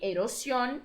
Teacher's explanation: é a penúltima então também é uma palavra grave e eurosion é uma palavra aguda já que a sua sílaba tônica é a última